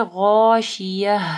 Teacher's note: اس کے اوپر جب آپ وقف کریں گے تو یہ ہا ہو جائے گی